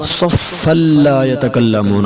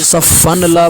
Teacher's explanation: अब यहाँ पर नून जो तनवीन है उसका नून खत्म किया गया है तो क्या बना सफ़ल्ला यतकल्लमून।